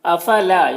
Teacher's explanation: یہاں پر الف مدہ ہے، اسے ایک الف کے برابر کھینچیں گے